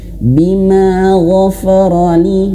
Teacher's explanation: huruf ghain tebal, huruf fa dia tipis. Jangan sampai huruf fa ini tebal terbawa oleh huruf ghain. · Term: huruf tipis